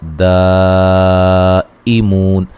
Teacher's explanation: ذی یا مدہ ہے، ہم میم ساکن کا اظہار ہے، علا لا مد اصلی ہے، صلا صاد کو موٹا، لام پہ الف مدہ، تیہم میم ساکن کا اظہار، دائمون، یہ جو مد ہے یہ مد واجب ہے، مو و مدہ ہے، وقفاً بڑی مد کے ساتھ پڑھ سکتے ہیں